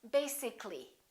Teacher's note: this a disappears so the a is not pronounced